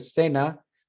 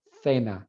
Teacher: Si estoy hablando de un punto de articulación, por ejemplo, de la Z en España, that would be interdental. ¿Por qué? Porque la lengua se mete entre los dientes.